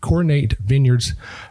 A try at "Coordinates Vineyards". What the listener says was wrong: Sort of. Coordinates. Vineyards. S on Coordinates, S on Vineyards.